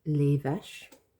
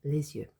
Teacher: in front of the Y, it kind of functions like a vowel, so you make a liaison, les yeux. So, les vaches ferment les yeux pendant, that's during, la traite de lait.